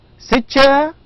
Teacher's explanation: utter the expression with a rise of intonation towards the end